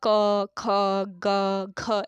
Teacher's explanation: इसमें जीभ का कोई काम नहीं हो रहा है, सीधे गले से आवाज आ रही है। तो ऐसे जो व्यंजन होते हैं आपके, ये कंठ्य व्यंजन के उदाहरण हैं।